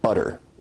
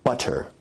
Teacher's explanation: your tongue is producing a tap sound there rather than a full stop or plosive sound